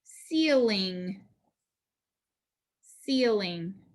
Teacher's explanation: vowel consonant vowel pattern with a short eye eel ceiling ceiling that first syllable is accented